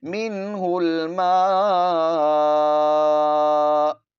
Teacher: آپ نے حمزہ کو بھی پڑھنا ہے، ہلکے سے جھٹکے کے ساتھ حمزہ کو ادا کیا جاتا ہے، منہ الماء، اس طرح ادا کریں گے۔